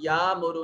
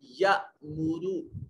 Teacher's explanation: यअमुर में हमजा अलिफ के ऊपर जब कोई अलामत या हरकत आती है तो अलिफ हमजा बन जाता है और हमजा को हमेशा झटके से अदा करते हैं। यहाँ या मुरु नहीं करेंगे, या मुरु पढ़ेंगे।